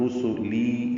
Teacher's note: رسولی میں را پر پڑھیں گے، سین سیٹی جیسی سفیر کی آواز سے ادا کریں گے جلدی اور معروف